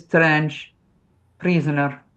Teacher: It's not going to be as strong as like the Scottish R, but it is strange, prisoner. You're going to have that trilled R.